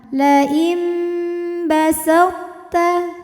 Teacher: Maka bunyi nunnya diganti jadi bunyi mim sukun. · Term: iqlab